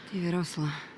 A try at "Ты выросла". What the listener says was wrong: She says, "Ты выросла." And that's where her accent kicks in, because it should be "Ты выросла." The emphasis should be on the first syllable. Выросла.